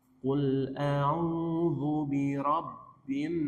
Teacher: Nunnya bertasydid, gunnah, ditahan 2 harokat.